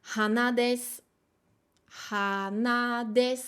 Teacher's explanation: sur le mot en lui-même on monte han mais en fonction de ce qu'il y a derrière soit on reste en haut soit on redescend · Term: pitch accent